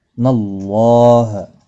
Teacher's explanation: نَاللَّهَ بحرب من اللہ، نون اللہ کے لام کے ساتھ ملے گا، اور اللہ کا لام اس زبر کی وجہ سے موٹا پڑا جائے گا، پر پڑا جائے گا، اس کے اوپر کھڑی زبر بھی ہے، ایک الف کی مقدار کے برابر کھینچ کر پڑھیں گے، ایک کو کھینچنا نہیں۔